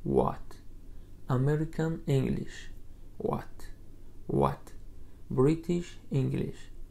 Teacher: ҳангоми талаффузи ин овоз лабҳоро барои талаффузи ӯ тайёр карда v талаффуз мекунем, ба мисли калимаҳои while, which ва why. ҳарфи h дар ин калима талаффуз карда намешавад.